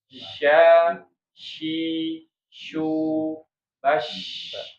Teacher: Kalau shin bukan huruf bibir tapi tengah lidah